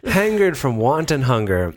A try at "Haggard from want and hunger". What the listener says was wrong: Wait, did you just say hangered? You told us it hangered.